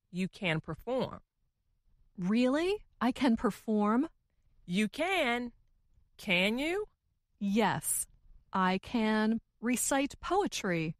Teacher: the more wanted to emphasize or make her meaning clear, the slower she said the word can?